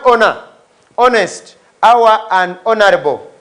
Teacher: the H is kept silent and we begin sounding those words on to the next letter